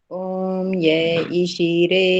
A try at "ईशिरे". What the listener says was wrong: ई शीरे, ई लंबा है ना, ई शीरे।